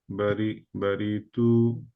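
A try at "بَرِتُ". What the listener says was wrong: টু রিতে slide টান হয়ে যাচ্ছে ভাই হ্যাঁ বায়ের সমান থাকবে বারি টু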